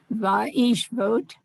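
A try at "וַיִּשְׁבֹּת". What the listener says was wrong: Boat. Actually, it's a bet. Vaish boat.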